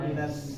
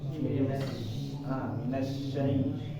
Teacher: Huruf shin-nya kurang menyebar ya. Jadi di dalam rongga mulut ini harus menyebar.